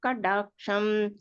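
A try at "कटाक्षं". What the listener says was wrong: கடாட்சம் டா இல்லம்மா, டா. கட்டா, கடான்னு சொல்லக்கூடாது, கட்டா.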